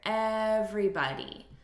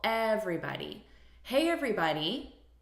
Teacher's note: look at the syllable stress here everybody so we're stressing the first syllable